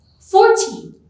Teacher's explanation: 40 receives stress or emphasis on its first syllable